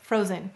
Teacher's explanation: Again, it's being a lazy or schwa'd vowel. And so that first syllable, fro, is stressed.